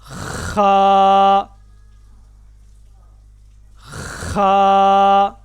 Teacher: ख गले के सबसे ऊपर वाले हिस्सा से जिसको अदना हलक कहते हैं।